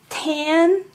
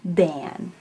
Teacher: you have your alveolar sounds the sound which is voiceless and the the sound which is voiced